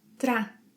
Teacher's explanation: This word is challenging because of the TR sequence. Whenever the letter R appears between a consonant and a vowel, we use a tap, a tap sound.